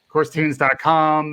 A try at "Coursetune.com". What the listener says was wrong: No S. Coursetune.com.